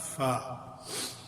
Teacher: اور اس سے پہلے ہم پڑھ چکے ہیں کہ جو فا ہے وہ دونوں وہ نیچے والے ہونٹ کے کا اوپر والے دانتوں کے کنارے سے لگنا، ہونٹ کے اندرونی حصے کا، اس کو بطن الشفو السفلی یعنی نیچے والے ہونٹ کا اندرونی حصہ بطن، تو وہ جب اوپر والے دانتوں کے کنارے سے لگتا ہے تو اس سے فا ادا ہوتا ہے